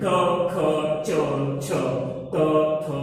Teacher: वह ध्वनियां व्यंजन होती है जिनमें कंपन नहीं होती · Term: अघोष व्यंजन